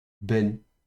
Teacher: on lit de nouveau la consonne B occlusif la voyelle serrée est et le n final